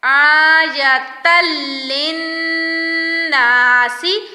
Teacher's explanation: آیتل پڑھنا ہے، آیتن نہیں، تا دو زبر کو لام کے ساتھ ملانا ہے